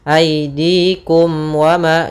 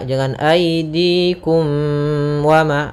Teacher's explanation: Suara mimnya harus jelas tanpa ditahan. Aidikum wama, jangan aidikum wama. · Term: izhar syafawi